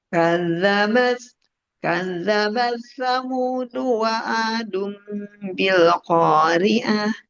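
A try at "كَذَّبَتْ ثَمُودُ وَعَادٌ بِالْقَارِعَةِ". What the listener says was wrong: Nah, jangan terlalu bilqariah. Nah, turunkan bilqiah.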